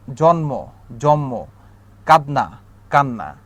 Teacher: শেষের যেই আমার ধ্বনিটা থাকে সেই ধ্বনিটাকে আমি দ্বিত্ব অর্থাৎ দুইবার উচ্চারণ করতেছি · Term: সমীভবন